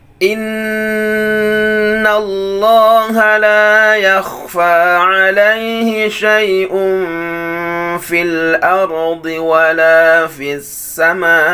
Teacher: Nun yang bertasydid akmalu ma takun, gunnahnya paling sempurna.